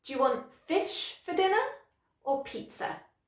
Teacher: Okay, so I would stress fish, dinner, pizza. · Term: sentence stress